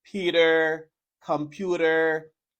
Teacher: see but but when you have T between two vow sounds you make a flap T and you pronounce a little D